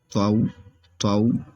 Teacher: یہ حروف مستعلیہ میں سے ہے طا، تو اس لیے موٹا کریں گے